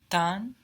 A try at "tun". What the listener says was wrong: Tun. D to T and then put an N to make it a verb in German. Tun. T-U-N. Tun.